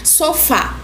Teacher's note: a sílaba tônica aí é fá, ou seja, a sílaba mais forte dessa palavra é o fá.